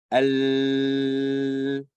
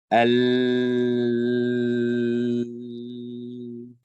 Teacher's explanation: So the sound has to flow through the sides. Al. So that's where the partial flow is happening.